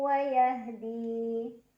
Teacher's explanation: karena ada tanwin fathah yang bertemu dengan huruf wau cara bacanya tanwin fathah dimasukkan atau dileburkan ke huruf wau sambil dengung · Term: Idgham Bighunnah